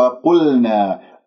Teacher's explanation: شوفوا وقلنا، الواو جاء بعدها القاف، ما الواو مرققة، تقول وقلنا، تفخم الواو وهذا خطأ، يجب أن ننتبه. القاف مفخمة مرتبة ثالثة لأنها مضمومة، لا تسحب ضمة القاف إلى اللام، تقول وقل، نطقت اللام وأنت عندك الشفاه مضمومة تأثرا بضمة القاف، يجب أن تكون ساكنة ومن غير الشفاه بالوضع الطبيعي.